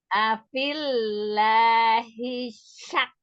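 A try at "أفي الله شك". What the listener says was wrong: Hi-nya jangan panjang-panjang.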